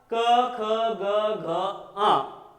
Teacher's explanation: इनका उच्चारण करते समय कंठ के पास स्पर्श होता है